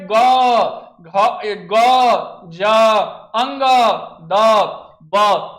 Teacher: सघोष व्यंजन को जब हम लोग बोलते हैं तो बोलते समय जो हवा निकलता है वह कंपन के साथ निकलता है, उसे हम लोग सघोष व्यंजन बोलते हैं।